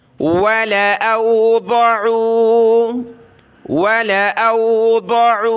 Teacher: लाम को खींचना नहीं है, बल्कि बग़ैर खींचे लाम को पढ़ेंगे